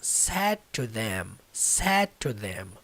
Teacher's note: O D literalmente não vai sair nessa pronúncia.